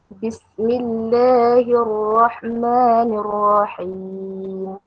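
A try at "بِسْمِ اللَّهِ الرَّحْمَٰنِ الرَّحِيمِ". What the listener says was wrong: La buka lagi. Bismillahirrahmanirrahim. Bismillah. Buka. Sebab dia baris fathah. Dan dia sifat istifal itu. Tak nipis.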